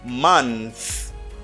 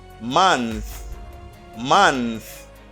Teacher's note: you say month, and here you got a voiceless th.